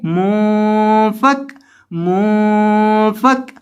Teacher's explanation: मीम पेश नून मुन, फा जबर काफ फक, मुफक, यानी नून की आवाज को नाक में ले जाकर पढ़ेंगे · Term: गुन्ना